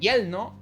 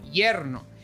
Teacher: Replacing R for L. Most Caribbean countries do this.